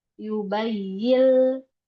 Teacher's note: Kalau zat huruf nun itu adalah ujung lidah. Jadi ujung lidahnya udah enggak nempel lagi di nun. Tapi dia sudah masuk ke huruf lam. Yubayil. Jadi udah langsung ke lam. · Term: Idgham kamil bila guna